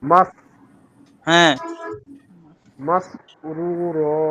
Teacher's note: এটা সিন সিন, তাহলে উচ্চারণে আরেকটু স্পষ্ট সিন করেন, অনেকটা শিনের মতো হচ্ছে আপনার।